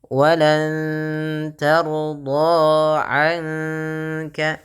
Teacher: sama nunnya samarkan ke kaf sambil ditahan dengan 2 harakat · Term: ikhfa